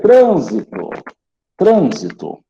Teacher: proparoxítona né a antepenúltima é mais forte